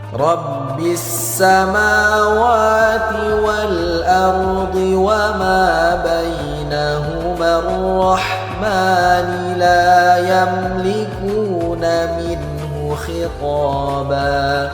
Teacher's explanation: Perhatikan kalimat minhu. Nun sukun berjumpa dengan huruf H, maka disebut izhar. Cara bacanya harus jelas, tidak boleh kita dengungkan.